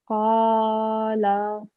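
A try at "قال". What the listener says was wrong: Just the lam, make it a bit shorter, 1 second long.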